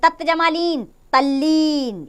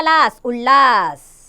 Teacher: त के बाद ल हो तो त के स्थान पर ल हो जाता है